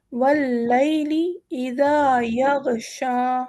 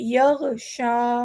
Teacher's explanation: غ ہمارا حروف حلقی ہے، فوراً شین آ گیا ہے. ہم اسے بہت کلیئرلی پڑھیں گے